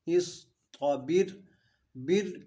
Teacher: یہاں پہ صاد ساکن ہے تو اس حرف قلقلہ نہیں ہے، اس کو ہلانا نہیں ہے. اس بر، بر کی را جو ہے وہ باریک ہوگی کیونکہ را ساکن سے پہلے زیر ہے